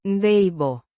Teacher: With a soft De. sound and the emphasis on the first syllable.